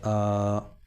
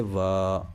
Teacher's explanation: اس لیے کہ حمزہ پر کھڑا زبر آیا ہوا ہے، لہٰذا یہ حرف مدہ کی طرح ایک الف کے برابر کھینچ کر پڑھا جائے گا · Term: مد صلہ